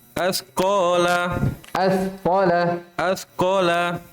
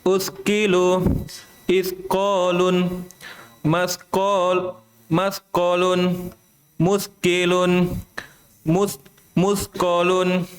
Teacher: jadi hati-hati ya ketika ada sa bersukun. Jangan sampai berubah menjadi sin.